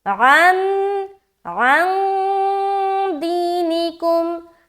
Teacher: تو دال حروف اخفا میں سے ایک ہے، لہٰذا جب ہم عین کو ملائیں گے تو ہم اخفا کریں گے، یعنی کہ ناک میں آواز کو چھپائیں گے